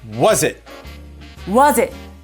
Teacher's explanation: there's no break between the S of is and I of it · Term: linking